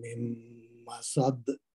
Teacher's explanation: تو یہ میم جو ہے میم کے ساتھ جو ہے نا اس کو ادغام ہو جائے گا. اور سین کے بعد دال ہے، دال پہ کلکلا کبرا ہوگا